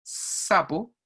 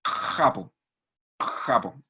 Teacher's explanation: la lengua se va hacia atrás y hace fricción contra la pared